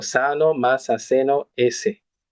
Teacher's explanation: Y en el español latinoamericano, el español andaluz y canario, esta pronunciación general es predorso alveolar, como sano, masa, seno, s, etc. Articulada con el dorso anterior de la lengua frente a los alveolos.